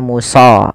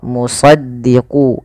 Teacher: Isti'la itu pangkal lidahnya terangkat. Kemudian idbaq itu lidah kita lebih melekat dengan langit-langit atas, maka dia agak ditebalkan dalam melafalkan huruf isti'la ini.